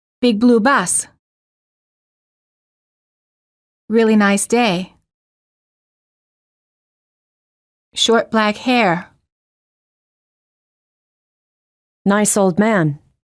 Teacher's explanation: 2 adjectives plus a noun. Stress the first adjective and the noun. The noun gets the most stress.